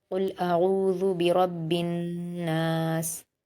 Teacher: नून पर तशदीद है तो गुन्ना भी करेंगे, नून पर अलिफ मद्दा है, दो हरकत भी खींचेंगे और सीन पर जज़्म देकर वक्फ कर देंगे।